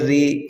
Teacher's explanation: را کے نیچے زیر ہے، متحرک ہے، را جلدی پڑھیں گے لیکن باریک پڑھیں گے